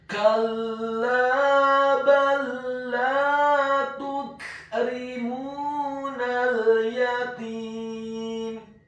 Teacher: Kemudian huruf ra-nya dibaca tipis, kasrah 1 harokat. Huruf mim-nya dibaca dhammah 2 harokat karena setelahnya ada huruf wawu sukun. Dan huruf nun-nya dibaca tipis, fathah cukup 1 harokat saja karena setelahnya ada huruf lam yang sukun.